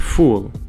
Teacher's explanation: it's not just the f sound from our English alphabet but it's the sound made with air blowing through the lips